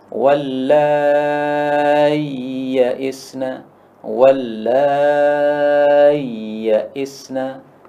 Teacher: Dalam qiraah Abu Amr, ini boleh dibaca dengan dua bacaan. Boleh hamzahnya diganti ya, sehingga menjadi bacaannya panjang 6 harakat. · Hamzahnya diubah jadi ya. Atau boleh juga hamzah ini dibaca tashil.